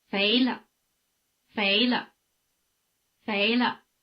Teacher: After the rising tone, the pitch of the neutral tone is in the middle.